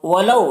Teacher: ولو یہاں پر واولین سے نرم آواز کے ساتھ جلد پڑھیں گے